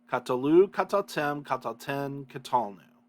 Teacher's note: basically three vowels um, with the accent on the final one